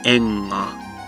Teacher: similar to the NG sound in English, except you don't have the G stop sound, g. It's just you hold out the nasal sound, enga.